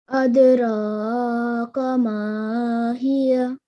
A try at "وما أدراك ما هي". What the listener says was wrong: So hiyah. So the ha, you have to sound the ha because it's joining onto the ya. There is a slight ha sound there. Ma hiya